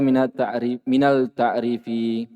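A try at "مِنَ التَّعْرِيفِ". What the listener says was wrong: Yang tidak panjang dia kasih panjang. Minat ta'rifi.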